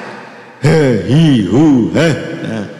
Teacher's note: makhrajnya ha kan dari pangkal tenggorokan